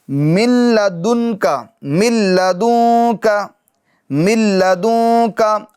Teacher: لام اور را میں ادغام تو ہوگا, قاعدہ لگے گا, مگر گنہ نہیں کریں گے